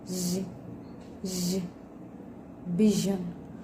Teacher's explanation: With manner of articulation, fricative, and place of articulation, palato-alveolar.